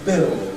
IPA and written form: bɪld (build)